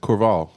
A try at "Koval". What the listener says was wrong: Koval. You want to put an R in it. I don't know why.